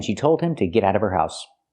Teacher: Now we need the Vv sound in of because we don't pronounce the H in her. We link the sounds.